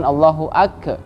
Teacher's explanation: Di kalimat kafnya dia pantulkan atau seperti huruf qalqalah. Maka itu kurang tepat.